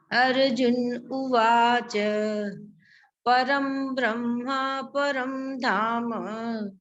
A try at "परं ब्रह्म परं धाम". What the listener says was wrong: ब्रह्मा नहीं है, यहाँ पर ब्रह्म है।